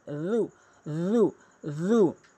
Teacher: জিব্বার আগা দাঁতের আগার সঙ্গে জিব্বার আগাটি মিলাবেন